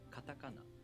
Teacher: The second and third syllables are pronounced higher in pitch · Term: pitch accent